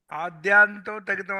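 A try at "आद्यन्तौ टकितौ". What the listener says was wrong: ఆద్యాంతో కాదు, దీర్ఘం లేదు.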